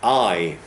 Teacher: that's just a single vowel sound it's just a center with no margins if that makes sense okay there's nothing at the beginning there's